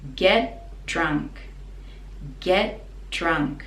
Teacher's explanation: So when we connect it together, get, the T is like a silent one. We just stop the tongue at the top.